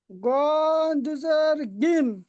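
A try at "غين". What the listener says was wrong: আর গইনটা আপনার উচ্চারণ হচ্ছে না, শুনুন। আইন ই বলে টানতে হবে, আপনি গইন বলছেন। আ আইন বলছেন, ওটা আইন, গইন এরকম বলতে হবে, হ্যাঁ। আবার গয় টান দিচ্ছেন আর আইন টান দিচ্ছেন আপনি।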